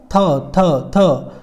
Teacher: ऊपरी दांत जीभ के साथ मिलकर ध्वनि बनाते हैं